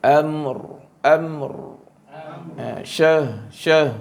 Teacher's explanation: Di hujung dia ada sifat takrir dipanggil. Getaran.